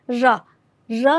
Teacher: आगे की जो जीभ की जो अग्र भाग है वह थोड़ा सा थरथराहट के साथ में उस ध्वनि को निकालता है तो इसलिए इसको लुंठित व्यंजन कहते हैं और लुंठित व्यंजन हमारे